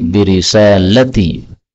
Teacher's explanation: lamnya boleh pendek menjadi birisalati